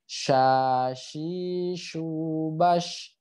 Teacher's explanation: nyesar ke huruf ta gitu ya bisa nyesar ke mana-mana gitu jadi tengah lidah bertemu langit-langit · sifat hurufnya syin itu mengandung sifat yang namanya tafasyi tafasi itu adalah menyebarnya aliran udara ya di mulut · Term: huruf syin